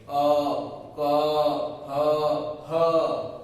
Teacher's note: इनका उच्चारण स्थान कंठ है, यानी कि ये कंठ से बोले जाते हैं, कंठ के माध्यम से बोले जाएंगे। · इनकी आवाज आप बोलोगे तो होठ हिलाने की जरूरत नहीं है, नाक की जरूरत नहीं पड़ती, ये कंठ से साउंड, कंठ नहीं हुआ तो ये नहीं बोले जाएंगे।